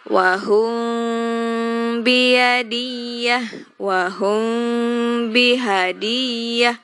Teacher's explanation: Kalau di iklab itu langsung memasukkan huruf ke mim. Tapi kalau di ikhfa syafawi itu bibirnya jangan rapat, tapi agak renggang karena samar